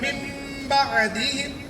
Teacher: मिन बअदिहिम है। नून साकिन के बाद बा आ गया है, अब वहाँ पर उस नून को मीम से बदल कर पढ़ने का नाम इक़लाब।